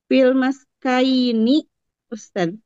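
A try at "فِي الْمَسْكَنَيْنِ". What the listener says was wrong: Nonnya setelah kaf hilang.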